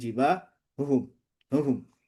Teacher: huruf ha keluar dari makhrajnya memang paling jauh ya dan paling berat. Dan biasanya kalau baca ini paling ngabisin nafas ya, bikin nafas cepat habis huruf ha ya.